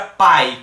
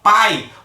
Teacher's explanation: vem a vogal depois vem a semivogal observa a palavra pai quando eu falo Pai observa que o a Parece que fica mais alto com mais volume mais intensidade quando eu falo i parece que dá uma queda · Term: ditongo decrescente